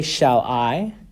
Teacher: when I say shall I you'll notice that the I is a little bit more drawn out so that is the stressed syllable